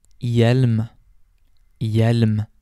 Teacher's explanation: The H can also be silent. This is typically when the H is followed by a J or a V, and these usually occur in the beginning of a word.